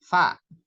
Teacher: Fa itu bibir yang bawah ini bertemu dengan gigi seri atas. Jadi nempel fa gitu ya.